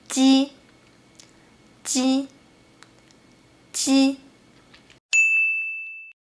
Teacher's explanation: you have to let the front part of your tongue stick to the roof of your mouth to block the air first, and then let the air out.